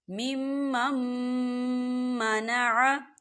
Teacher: دیکھیں یہاں نون ساکن ہے، نون ساکن کے بعد میم مشدد ہے، اور میم جو ہے حروف یرملون میں سے ہے، تو یہاں پر ادغام ہوگا۔ ہم نون ساکن کو نہیں پڑھیں گے، ہم پچھلے میم کو اگلے میم میں مدغم کر کے پڑھیں گے۔ کیسے؟ مِمَّن مَّنَعَ، تھوڑا سا غنہ بھی ہوگا۔